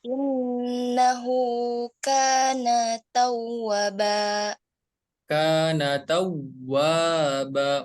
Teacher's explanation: Jadi untuk kana, kafnya dibaca panjang 2 harokat, nunnya enggak dibaca panjang. Kana tawwa, wawunya dibaca panjang 2 harokat juga.